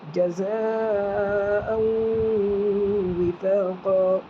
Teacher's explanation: زا کے اوپر مد ہے، چار الف کے برابر کھینچے گا، مد متصل ہے